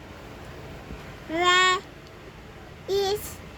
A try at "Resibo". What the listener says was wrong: Anong is? Nauna ba yung I? Ulit. Hindi nga is eh.